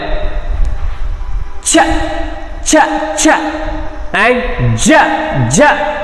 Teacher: This is a combination of ಪ್ಲೋಸಿವ್ ಆ್ಯಂಡ್ ಫ್ರಿಕೇಟಿವ್ ಅಂತಲೇ ಹೇಳ್ಬೋದು. ಸೊ ಇಲ್ಲಿ sudden air stream sudden stop ಆಗೋ ಚಾನ್ಸಸ್ ಇರುತ್ತೆ. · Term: ಆಫ್ರಿಕೇಟ್